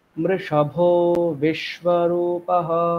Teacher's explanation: ভোতে আমরা স্বরটা উপরে উঠিয়ে দেবো, কারণ বিতে আমাকে আবার নামাতে হবে।